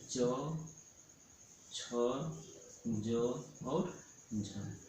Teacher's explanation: इसको बोलेगा स्पर्शी संघर्षी, मतलब स्पर्श और संघर्ष दोनों करते हैं